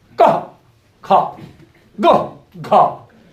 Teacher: वर्गों के पहले, तीसरे और 5वें वो अल्प प्राण कहलाते, मतलब उसमें प्राणवायु कम लगती, ठीक है। महाप्राण में जोर लगता है बोलने में, हा जैसी ध्वनि निकलती